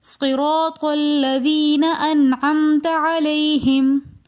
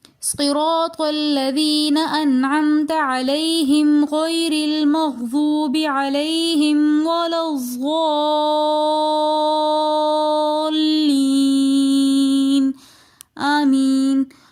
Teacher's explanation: صراط دوبارہ را مفتوح آ رہی ہے، یعنی کہ را کے اوپر زبر ہیں تو اس لیے را کو ہم موٹا پڑھیں گے۔ الذین میں یا مدہ آ رہی ہے تو لہٰذا یا مدہ کو تھوڑا سا کھینچ کر پڑھیں گے۔ صراط الذین انعمت میں نون ساکن کے بعد حروف حلقی میں سے عین آ رہا ہے تو لہٰذا یہاں پر ہم غنہ نہیں کریں گے کیونکہ یہاں پر اظہار ہو رہا ہے۔